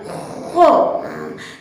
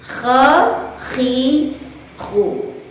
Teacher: tidak dengan menempel seluruh lidah ke atas langit-langit, akan tetapi direnggangkan sedikit berada pada posisi datar, kecuali pangkal lidah yang dinaikkan mengenai ke langit-langit atas tadi, sehingga suara dihasilkan dengan suara yang tebal dan terbuka. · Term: huruf kha